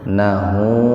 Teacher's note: Huruf H didahului oleh huruf hidup, nunnya kan di fathah hidup, jadi hu-nya dibaca panjang dua ketukan